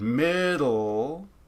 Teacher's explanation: This is syllabic, like this L, even though there's not a vowel in this syllable, say in the word middle, that would be a syllabic L potentially